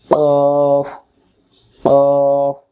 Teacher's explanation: অক্ষর জিহ্বার গোড়া থেকে মোটা করে পড়তে হয়। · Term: কফ